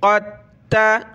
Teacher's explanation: क़ाफ को हमने ता के साथ मिलाना है, दाल को नहीं पढ़ेंगे। क़ाफ ता ज़बर क़द, ता ज़बर ता, क़द ता।